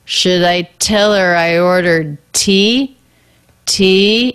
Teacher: the pitch goes up it's a yes no question those are our two most stressed syllables there should i the